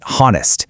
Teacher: That H is completely silent. You just start right on the O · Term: silent H